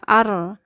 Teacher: ada ro bertasdid yang hanya bergetar sekali ya, masuk ke dalam ketukan tasdidnya ya, arro langsung diangkat rahang, ar-rahmanir-rahim ya.